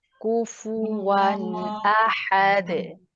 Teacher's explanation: तो यहाँ पर आपने फील किया होगा कि जो हम दाल के ऊपर कलकला कर रहे हैं ये आयत के एंड पे आ रहा है, तो इसमें थोड़ी शिद्दत के साथ कलकला किया जाता है।